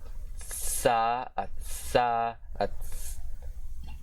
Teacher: the voiceless dentalveolar sibilant fricative consonant